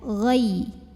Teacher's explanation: Karena ada ya sukun yang didahului baris fathah, maka cara bacanya cukup kita lembutkan saja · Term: huruf lin